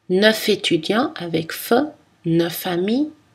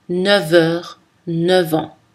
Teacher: Pareil avec 9 où le F devient V, mais seulement devant les mots heure et an.